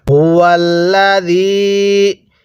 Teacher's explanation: এই হায়ের মধ্যে উচ্চারণের সময় গলার মধ্যে হালকা আওয়াজ হবে